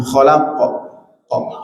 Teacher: qalqalahnya qofnya khalaqo cenderung ke fathah